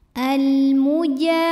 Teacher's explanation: alif lam menghadapi huruf qamariah yaitu mim maka lam sukun dibunyikan dengan jelas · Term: alif lam qamariyah